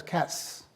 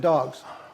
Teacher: there's a hissing sound but there's no voicing so that's not a z sound it's an s sound